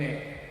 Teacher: the Yorkshire accent and the way we cut out the T, like in it, and things like that. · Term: Glottal Stop